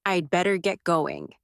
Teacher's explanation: Say it slowly, with a light fall at the end. It tells the truth without sounding abrupt.